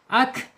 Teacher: napasnya atau aliran napasnya keluar tetapi suaranya tertahan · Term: asyidah